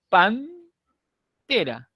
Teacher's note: La N, que originalmente era alveolar, se ha hecho dental, se ha dentalizado. ¿Por qué? Porque el siguiente elemento es una dental, la T.